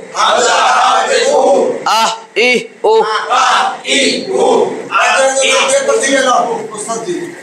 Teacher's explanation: এক নম্বর মাখরাজ হলকের শুরু হইতে হামজা হা